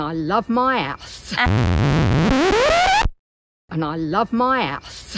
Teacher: Essex girls drop their H's.